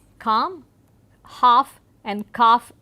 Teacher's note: the sounds such as m and f are lip consonants, and there is this L sound which comes in between, which gets dropped gradually